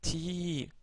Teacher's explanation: Enfin, la voyelle longue Ya, ça nous donne le son Ti, donc Ti prolongé, Ti, comme dans Beiti.